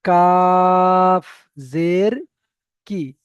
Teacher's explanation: এখানে অনেক যে কাফ জের কি বলে টান দিয়ে ফেলছেন, টান হবে না।